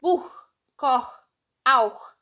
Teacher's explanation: Após as letras A, O e U, ele tem o som de algo pegando na garganta. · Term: som do CH